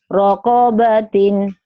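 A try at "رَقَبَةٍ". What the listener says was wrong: Nggak ada yang panjang. Rokobatin.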